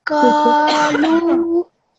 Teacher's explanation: You made the qaf long because it has a alif mud here, okay? That's why you made the qaf long, which is very good.